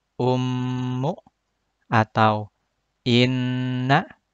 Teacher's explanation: Saat kita melafalkan bacaan gunnah, contohnya ummu atau inna, maka dengung atau gunnahnya akan bergetar pada al-khayshum atau pangkal hidung. Udara keluar mengalir dengan lancar melalui rongga hidung, tanpa ada hambatan. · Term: gunnah musyaddadah